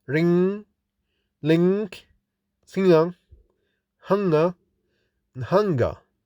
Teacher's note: Identification of the consonant ny or ing. This voiced nasal sound is made with the back of the tongue against vellum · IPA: /ŋ/